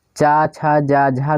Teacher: चा छा जा झा दोस्तों जो हैं ये आपके स्पर्श संघर्षी ध्वनियाँ होती हैं